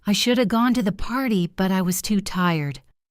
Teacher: The words should have reduce to shoulda. It sounds like one word.